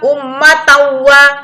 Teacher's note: Ummatan wahidah harus dibaca dengan didengung. Ya, idgham bigunah memasukkan huruf wawu ke dalam tanwin. Ummatawa memasukkan di tanwin ini huruf wawu.